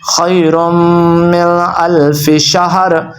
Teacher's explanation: خیرم پہ آپ نے غنہ کرنا ہے، من پہ نہیں کرنا ہے کیونکہ آگے آ رہا ہے حروف حلقیہ